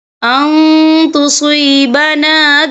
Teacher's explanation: دیکھیں یہاں نون ساکن ہے، نون ساکن کے بعد جو ہے تا آ رہا ہے اور تا جو ہے اکفا کا ورڈ ہے تو ہم یہاں اکفا کریں گے، نون ساکن کی آواز کو ناک میں چھپائیں گے